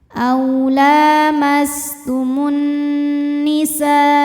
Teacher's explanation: Nunnya ghunnah musyaddadah karena nun bertasydid, cara bacanya dengung, bunyi N tahan sampai ada suara masuk hidung. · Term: gunnah musyaddadah